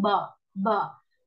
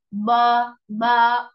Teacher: मजबूत लहजे पर होंठ किसी कदर ऊपर नीचे खोलते हुए आवाज को बगैर लंबा किए जबर की अदायगी की जाती है। यानी आपने, जब आप जबर अदा करते हैं तो आपका मुंह जो है वो खुलता है, बट आपने जब अपना मुंह खोलना है तो बहुत ज्यादा मुंह नहीं खोलना।